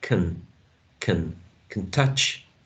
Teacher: the previous word can should be pronounced with schwa